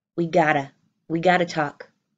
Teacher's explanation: in this sentence I don't even say the have I've completely removed it